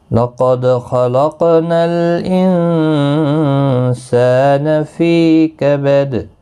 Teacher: لَقَدْ خَلَقْنَا الْإِنسَانَ فِي كَبَدٍ، لقد دال ساکن پر قلقلہ ہوگا، خا مستعلیہ ہے، پر پڑھا جائے گا، قاف بھی پر پڑھا جائے گا اور نون ساکن پر اخفا ہوگا، پھی یا مدہ ہے، دال